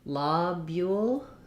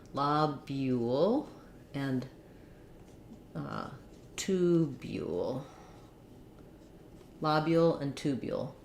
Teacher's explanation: in American English, O when it's stressed says the ah sound